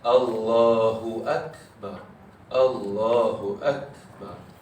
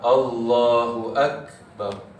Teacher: Ada huruf kaf ni, nafas tahan, suara tahan, nafas lepas. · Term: sifat hamas